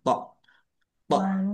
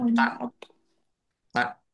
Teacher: tok sukun bacaan kolkolah dibaca memantul ditampakkan pantulannya tok tok berat ya beda dengan tak tak